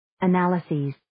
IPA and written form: ˈænlaɪzɪz (Analyses)